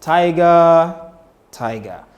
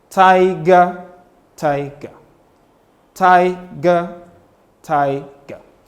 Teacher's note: So you look at the first one you say tiger tiger. So the first goes high and then the second syllable comes lower.